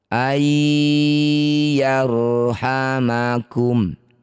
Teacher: Nun sukun bertemu ya disebut bacaan namanya idgham bighunah. Masukkan bunyi nun pada ya dengung dua harakat. · Masukkan bunyi nun pada ya, dengung 2 harokat. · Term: idgham bi gunnah